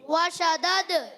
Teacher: دال میں قلقلہ ہوگا, آواز لوٹ کر آئے گی. آواز کا لوٹنا یہی ہے قلقلہ.